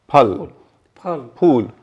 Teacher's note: हिंदी का फ जब बोलते हैं, जैसे फल, फूल, ये जो फ बोलते हैं तो हमारे दोनों होंठ एक दूसरे को छूते हैं। आप बोल के देखिए, फल, फल, फूल।